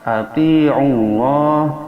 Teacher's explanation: lafaz Allah sebelumnya ada doma atau patah, maka dia hukumnya dibaca tebal atau tafhim pakai o. Berbeda lafaz Allah jikalau sebelumnya ada kasrah maka dibaca a, tarkik.